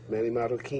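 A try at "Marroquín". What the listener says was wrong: Marroquin. You got to roll the R's. Marroquin.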